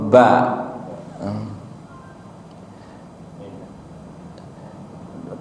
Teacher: dua bibir atau as safiatain itu bibir atas dan bawah bertemu itu paling mudah ya atau ba kedua bibir menutup sepenuhnya nah